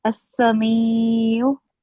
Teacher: So the ya sakina is preceded by a maksul letter. So that's why we are going to read it for 2 counts.